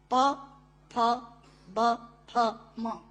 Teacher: प, फ, ब, फ, म दोनों होंठ मिलाकर बोले जा सकते हैं। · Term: ओष्ठांग